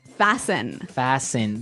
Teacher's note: The T kind of becomes silent.